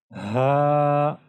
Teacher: इसको बारीक भी पढ़ना है और इसको ज्यादा नहीं खींचना है एक से दो सेकंड के लिए आपने इसको खींचना है